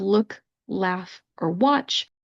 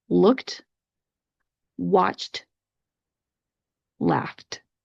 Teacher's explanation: All of those are what we call unvoiced consonants, where your vocal cords are not vibrating.